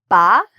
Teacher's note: Okay, so the main lip sounds of English are ba, and notice what my lips are doing. I'm using both the top and the bottom lip to pronounce the sound.